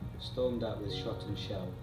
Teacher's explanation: the use of sibilants reflects the viciousness of the attack